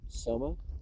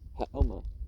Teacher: The initial S in Sanskrit is changed into Avesta to H, thus Soma, the sacred juice used by the Brahmins, equals Haoma.